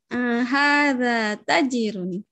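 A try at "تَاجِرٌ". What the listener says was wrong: Tajirun. Taknya panjang. Tajirun.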